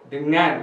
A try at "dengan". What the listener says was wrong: Not the nan. No, not the nan.